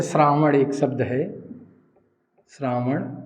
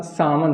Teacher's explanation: हिंदी में क्या होता है, इसका दंत श्र का प्रयोग होता है। जैसे श्रावण एक शब्द है, श्रावण, तो इसका सावन हो जाएगा, ये दंत सा आ गया। देखिए यहाँ ये श्र लगा है श्रावण, तो इसका दंत हो गया।